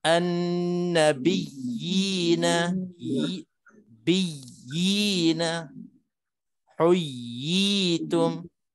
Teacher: Tapi qadar panjangnya 2 harakat aja. Setelah kita tamkin, setelah kita tekan, tegaskan bunyi ya yang sabdu, barulah kita panjang yina, yitum, 2 harakat. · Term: mat tamkin